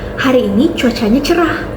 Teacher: Diujarkan dengan intonasi yang turun dan ditandai dengan kalimat berita ataupun pernyataan. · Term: intonasi deklaratif